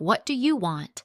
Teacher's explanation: if you stress you, like what do you want? it can sound rude or aggressive.